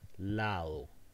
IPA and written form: laðo (side)